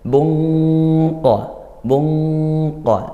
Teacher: tanwin bertemu qof karena pertemu huruf q Huruf tebal maka ikhfanya juga ikut tebal